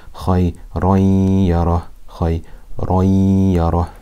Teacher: we will say khayran yara with ghunna for two harakat